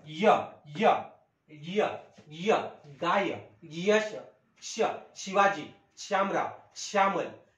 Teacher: म्हणजे तालुद्वारे ज्यांचे उच्चारण होते य ने युक्तच यांचा उच्चार करायचा